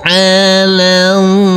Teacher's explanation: Di sini ada huruf lam bertemu dengan lafadz Allah dan alif maksurohnya di sini, maka huruf lam kita baca pendek langsung masuk ke lafadz Allah.